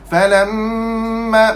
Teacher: Falamma mim syaddah wajibal ghunnah.